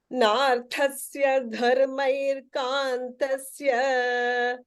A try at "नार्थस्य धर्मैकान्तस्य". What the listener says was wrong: Dharmair, no, dharmai only.